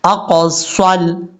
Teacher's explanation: حمزہ کے بعد جو قاف ہے یہ قاف فل مود پڑھا جائے گا